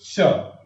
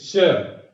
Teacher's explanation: जब भी हम ऊष्म व्यंजनों का उच्चारण करेंगे, जैसे श, कहिए श, तो देखिए जिह्वा ताल को छूती तो नहीं है, बीच में हवा रहती है, वो घर्षण करते हुए बाहर आती है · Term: संघर्षी